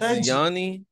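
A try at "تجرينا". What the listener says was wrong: नहीं तजरीना रा पढ़नी है।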